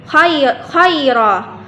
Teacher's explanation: Tetapi apabila kita berhenti, di situ khaira kita bacanya, bukan lagi khairan. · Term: mad iwad